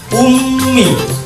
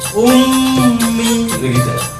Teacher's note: Materi gunnah ini adalah materi tentang mim dan nun yang dipasang tasdid, yang cara bacanya harus dengung ke hidung yang nyata. Contoh kayak bacanya ummi, harus dengung dulu.